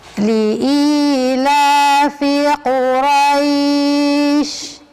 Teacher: I-nya ada ya sukun, ya, ada ya sukun. Jadi i-nya itu panjang, la-nya juga panjang.